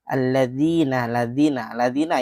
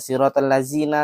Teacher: Jadi lidahnya itu dikeluarkan sedikit di antara gigi kita yang di bagian depan. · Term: huruf dzal